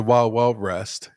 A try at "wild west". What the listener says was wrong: said wild rest.